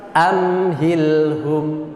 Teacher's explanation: Ini lam tidak boleh mantul, mim tidak boleh mantul, dan semuanya satu ketukan.